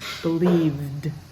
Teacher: Believe has a voice at the end, and so the end of that word has a D sound, another voice.